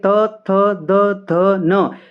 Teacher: आपका जो जीभा है वो दंत के साथ लग रही है